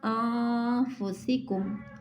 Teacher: انفسکم میں نون ساکن کے بعد حرف اخفا میں سے فا آ جانے کی وجہ سے اخفا ہوا